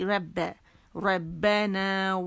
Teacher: ربنا را موٹا ہے, با باریک